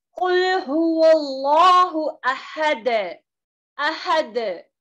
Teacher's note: खलखलाए वुस्ता जो है दरमियानी खलखला, यानी कि वीक से और ज्यादा स्ट्रॉन्ग है, तो ये वक्त की हालत में आएगा जब एक आयत को हम स्टॉप करेंगे, जैसे कि कुल हुवल्लाहु अहद, अहद। · यहाँ पर बाउंस हो रहा है, दाल को जो है अहद इस तरीके से स्टॉप नहीं करना, इसको क्या करना, बाउंस की तरह पढ़ना है।